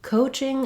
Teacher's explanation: coaching again has first syllable stress um letter c says the k sound uh this o in